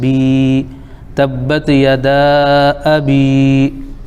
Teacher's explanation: بایا زیر بی یا مدہ ہو جائے گا، ایک الف کھینچیں گے